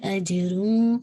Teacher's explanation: جیم پہ آپ کا انشاءاللہ قلقلہ ہے